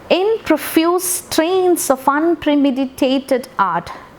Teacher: first syllable is unstressed, second syllable is stressed, unstressed, stressed, unstressed, stressed. Hence it is iambic. So fifth line is in the form of iambic hexameter.